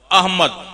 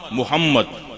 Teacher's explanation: हमजा का मखरज हल्क है और मीम का मखरज होठ है